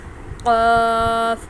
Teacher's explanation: قاف جو ہے وہ ہم گلے سے اس کے حلق سے آواز آئے گی اس کی، اور اس کا جو ہے وہ قاف لمبا بھی اس کو کھینچیں گے مدہ کی وجہ سے.